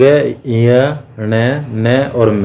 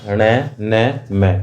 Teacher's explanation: इसके बाद जो हमारे पास है नासिक व्यंजन है तो अंग ञ ण न और म इन इनका जो उच्चारण नासिका के साथ क्रमश कंठ तालु मूर्धा दांत तथा ओष्ठ के संपर्क से होता है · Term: नासिक्य व्यंजन